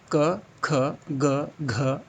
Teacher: तो हम कंठ से होने वाले उच्चारण को देखते हैं।